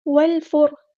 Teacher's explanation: drop ہو جائے گا، لام یہاں پر لام قمریہ ہے، والفر، یہاں پر را کی جو آواز ہے وہ ہم پورا ادا کریں گے، ہیوی لیٹر ہے